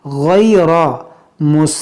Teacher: यहाँ पर देखें गैन हुरूफ मुश्तालिया, इसको मोटा करेंगे। रा पर ज़बर है तो इसको भी मोटा करेंगे।